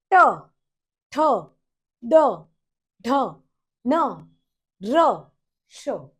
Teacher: मूर्धन्य मीन्स जो अपनी टंग है वो रोल होके अप पैलेट को, मीन्स तालुए को टच होती है। व्हेन यू से ट, ठ, ड, ढ, न, र, श।